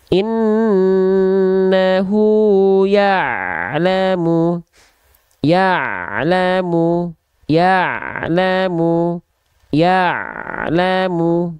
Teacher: Jadi ain itu dilafalkan dari bagian tengah tenggorokan kita. Ya, tepat dari bagian tengah tenggorokan kita.